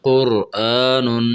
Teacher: یہاں قاف اور را یہ دونوں کو موٹا کر کے پڑھنا چاہیے